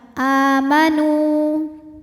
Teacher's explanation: Nu hukumnya adalah mad tabi'i zahiri. Sebab ada waw sukun didahului harokat dhammah, maka huruf nun ini kita panjangkan dua harokat